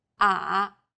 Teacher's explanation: The third tone goes down from a low pitch, then rises to the middle of the pitch range.